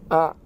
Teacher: ketika dia sukun itu seperti yang tertekan huruf ainnya.